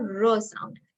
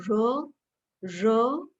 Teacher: when you say raw then there is no friction the voice is just coming out raw nothing is stopping right raw nothing is stopping it's not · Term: frictionless continuant